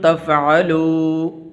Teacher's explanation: واو مدہ ہے تو اس کو لمبا کریں گے